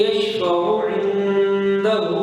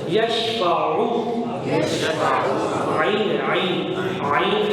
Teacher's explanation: عین حلق کے درمیان سے نکلے گا